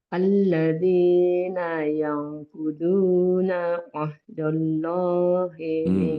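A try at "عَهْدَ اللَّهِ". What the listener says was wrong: Itu jangan dicampur. Alladzina yanquduna ahda. Jangan ahdo.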